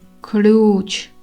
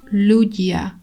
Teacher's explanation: The L sound is more palatal and has a different pronunciation than the regular L. · The L sound is softer and pronounced with the tongue touching the roof of the mouth. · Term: soft L sound